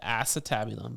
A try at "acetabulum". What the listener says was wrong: Yeah, it sounds a little like Emphasis on the ass, but like it's acetabulum, right?